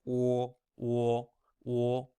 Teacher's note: O is pronounced like or, but again, you're not finishing with that hard R. So it's o, o, o.